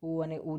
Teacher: ઉ અને ઉ છે હોઠમાંથી બોલાતા ઓષ્ઠ્ય કહેવાય.